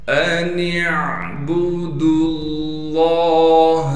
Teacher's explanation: حمزہ کو بغیر جھٹکے بغیر کھینچے پڑھنا ہے ، نون کو ہم عین سے ملا دیں گے، عین سے · دال کو ہم لام سے ملا دیں گے